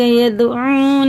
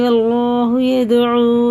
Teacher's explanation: دال میں قلقلہ ہے، یہ بھی دال میں قلقلہ ہے